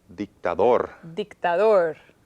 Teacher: has stress at the very last syllable and it ends with an R. Son 3 sílabas.